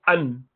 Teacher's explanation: half of the sound is coming from the nose